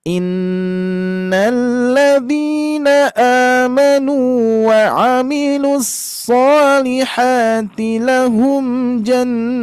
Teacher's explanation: Ingat, nun bertasydid kita tahan terlebih dahulu, Pak Bu. Jangan tergesa-gesa. Gunnah musyaddada.